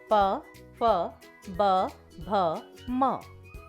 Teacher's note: प वर्ग के व्यंजन ओष्ठ कहलाते हैं, क्योंकि इनको बोलते समय दोनों ओष्ठ आपस में मिलते हैं